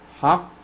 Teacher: حق is قلقلة. حق, you make a jerking sound